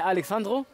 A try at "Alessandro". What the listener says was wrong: Alessandro mit S. S. Alessandro.